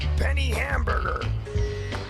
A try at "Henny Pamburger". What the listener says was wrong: That's Ms., and it's pronounced Henny Pamburger.